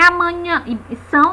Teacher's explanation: no final a gente vê que é uma vogal nasal, esse final são.